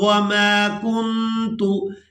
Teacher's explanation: نون ساکن پر اخفا کریں گے، آواز کو ناک میں چھپا کر ادا کریں گے